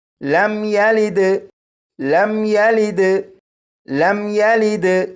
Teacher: اس میم ساکن پر غنہ نہیں کریں گے